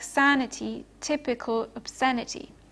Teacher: the stressed vowel occurs in the anti penultimate syllable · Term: anti penultimate stress